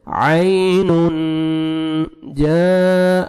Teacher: اخفاء کرنا ہے نوز میں ساؤنڈ لے کے جانا ہے